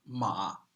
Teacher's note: a third tone like a frog my voice is so raspy if you make that kind of frog voice I call it creaky voice that's third tone